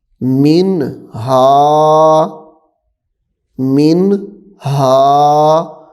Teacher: یہاں پہ بھی غنہ نہیں ہے کیونکہ نون ساکن کے بعد حروف حلقی میں سے ہا آ رہا ہے. حروف حلقی میں سے ہا ہے تو اس لیے غنہ یہاں پہ بھی نہیں کریں گے.